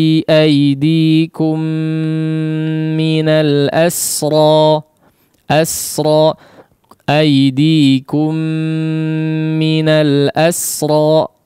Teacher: mim sukun yang setelahnya bertemu dengan mim yang berharakat, maka hukumnya diidghamkan dengan disertai gunnah yang dipanjangkan